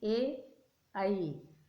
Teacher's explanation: आवाज़ कहाँ से आ रही है, कंठ से भी आ रही है और तालु की ओर जा रही है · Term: कंठ तालु